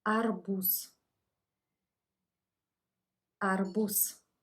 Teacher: Z is devoiced at the end of the word